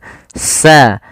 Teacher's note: ujung lidah menempel dengan gigi seri atas